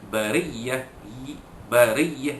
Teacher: ri itu ra tarqiq, itu dibaca dari bawah, dibaca ra itu dibaca nipis